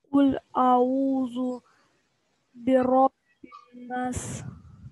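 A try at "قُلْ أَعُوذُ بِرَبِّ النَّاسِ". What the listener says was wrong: Нет, ты сократил нас. Би-робби-нас.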